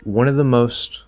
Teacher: so we can drop the v and of right that's a pretty normal thing to do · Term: dropping the consonant